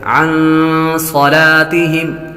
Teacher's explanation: نون ساکن پر غنہ ہوگا، نون ساکن کے بعد صاد حروف اخفاء میں سے آ رہا ہے تو غنہ کریں گے۔ عن صلاتہم صاد کو پر پڑھیں گے، صاد حروف مستعلیہ میں سے ہے۔